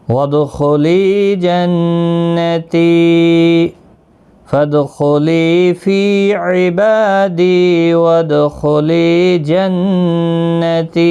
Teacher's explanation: ساکن پر قلقلہ ہوگا، خا مستعلیہ ہے، پر پڑھا جائے گا، لی یا مدہ ہے، نون مشدد پر غنہ ہوگا، تی یا مدہ ہے